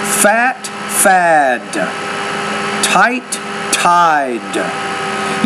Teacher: when the d's at the end the vowel is longer which precedes it · You notice how when the D's at the end, the vowel's longer, which precedes it. If the T is a final sound in the word, then the vowel is shorter before that one.